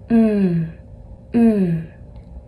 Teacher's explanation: you can hold it out as long as you want and it's made with your lips touching and not coming apart